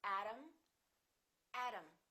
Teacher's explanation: t between two vowels sounds exactly like the d